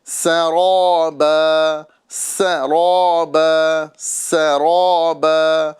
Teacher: یہاں پر سین کو باریک، را کو پر پڑھنا ہے